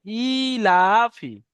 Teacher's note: খাড়া জেরটি হলো ইয়ায় মাদ্রাস সমতুল্য, তাই একে এক আলিফ পরিমাণ টান দিয়ে পড়তে হবে।